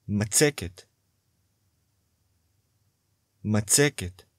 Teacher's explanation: Notice the penultimate stress.